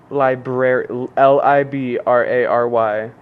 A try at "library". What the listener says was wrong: Yeah, library. But there's no E. It's included. No. You're saying like lie and then berry. Library. Yeah, same thing. Nope. Library. Library.